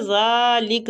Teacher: زال کو کھینچیں گے، کھڑی زبر ہو رہی ہے اور یہ نرمی والا حروف ہے